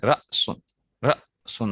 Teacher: حمزہ کو جب آپ پڑھتے ہیں تو آپ جھٹکے کے ساتھ پڑھتے ہیں، حمزہ جھٹکا کی آواز دیتا ہے، رأسن، रअसुन।